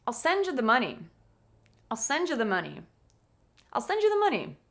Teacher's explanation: You can probably pick out the most important word in the sentence at the end, which is money